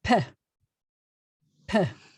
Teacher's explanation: So the hey at the end is essentially silent. So it's Pheh.